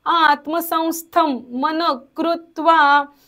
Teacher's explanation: आता मनच्या नंतरचा जो विसर्ग आहे तो अर्धा बोलायचा.